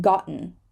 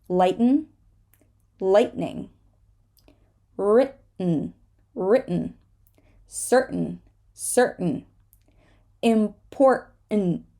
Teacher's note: we hold the T before an N